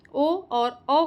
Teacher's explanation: ओ औ ओ दौतो कंठोष्ठम ओ और औ का उच्चारण स्थान कंठोष्ठ है।